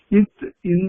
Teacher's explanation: பல் முதல் மருங்கின் அன்னத்திற்கு நெருக்கமாக உள்ள மேற்பல்லினுடைய அடியை போய் பொருந்த பிறக்கும் நாக்கினுடைய நுனி போய் அன்னத்தினுடைய அடிப்பகுதியை போய் பொருந்த பிறக்கும்